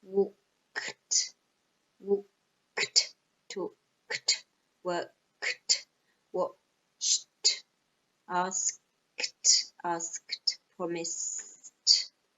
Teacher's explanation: all these verbs end in a sound with no voice